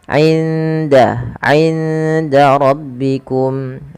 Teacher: suara indanya nun sukunnya disamarkan ke huruf dal